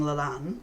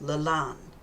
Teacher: Stress on the an, because it's double vowels. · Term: elongated or stressed vowel